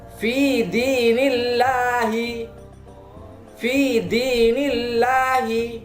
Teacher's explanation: didahului oleh huruf yang berharokat kasroh, maka mulut tidak menjorok ke depan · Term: lam tarkik